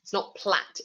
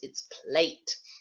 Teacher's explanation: that E at the end changes the vowel sound in the middle, makes it much longer